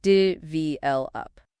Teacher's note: Develop is pronounced develop, with the stress on the second syllable